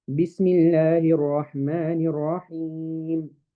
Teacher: I made the ya in Rahim 2 harakas. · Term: mad arid lis-sukun